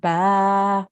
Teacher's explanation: you didn't say bun you said ba which was correct because you're making a stop there